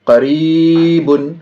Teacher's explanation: قاف کے اوپر زبر ہے، زبر کو جلدی پڑھیں گے، تھوڑا بھی نہ کھینچیں گے، زبر کی آواز اوپر کو اٹھتی ہے۔ یا ساکن سے پہلے را میں زیر ہے، یا مدہ ہوگی، یا مدہ کو تھوڑا کھینچ کر پڑھیں گے۔